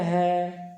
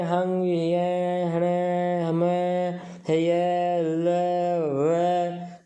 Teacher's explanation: तो ये जो है जब इनका उच्चारण केवल करते हैं है तब तो है कंठ है, लेकिन हम कहें हंग, ये, हणे, हमें, है, ये, ले, वे, तो ये सब उर प्रदेश से बोले जा रहे हैं। कंठ के जो नीचे हृदय प्रदेश आ जाता है वहाँ से इनका उच्चारण हो रहा है, इसीलिए इन्हें औरस्य कहा जाता है।